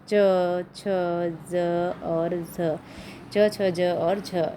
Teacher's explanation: जो आपको च वर्ग मैंने वहाँ पर छोड़ दिया था उसको कहते हैं स्पर्श संघर्षी। स्पर्श संघर्षी मतलब स्पर्श भी कर रहे हैं और घर्षण भी हो रहा है।